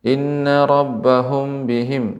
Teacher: apabila mim mati bertemu dengan ba Ini namanya Ikhfa Syafawi ya dibaca dengan disertai dengan dengung atau Pangkal hidung